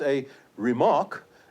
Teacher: please note that the stress is now on the second syllable